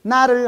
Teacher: 치조음이기 때문에 혀끝 발음입니다. 혀끝에다가 힘을 줍니다.